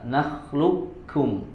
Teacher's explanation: Kalau di nakhluqukum maka tidak disempurnakan sifat isti'la'nya atau sifat tebal pada huruf qafnya, dikamil, disempurnakan langsung masuk ke huruf ka.